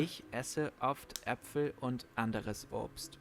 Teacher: Germans pronounce vowels very strongly, especially when they appear at the beginning of a word. This causes the vocal cords to open suddenly and all the air that has built up to escape at once. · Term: glottal stops